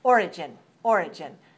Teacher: If you say the noun origin, that's stressed on the first syllable.